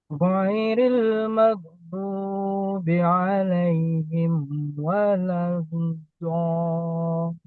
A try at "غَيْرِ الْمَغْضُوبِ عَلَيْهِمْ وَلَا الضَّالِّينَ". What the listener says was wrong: Oke, suara istitolahnya sudah ada. Tadi cuman dolin itu harus dibongkar.